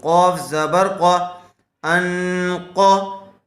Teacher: نون ساکن کے بعد قاف آیا ہوا ہے حروف اخفاء میں سے غنے کے ساتھ اخفاء کر کے پڑھیں گے